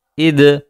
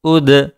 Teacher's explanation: जब दाल साकिन हो और उस पर कलकला हो तो आवाज़ लौट कर आती है, जिसे हम कलकला कहते हैं।